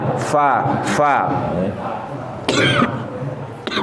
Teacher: Nah ini dia hamas fa, dia keluar anginnya fa.